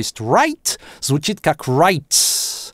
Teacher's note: у британцев зачастую /t/ звучит c т. н. “аффрикацией»